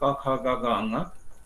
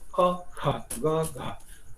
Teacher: क माने कम हवा लगने वाला, कम हवा का प्रयोग होना, अल्प प्राण बोलते हैं जिसको। ख माने ज्यादा हवा लगने वाला, यानी कि ज्यादा हवा प्राण लगने वाला, महाप्राण बोलते हैं। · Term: अल्प प्राण महाप्राण